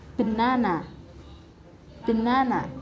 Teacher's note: the stress is located on the second syllable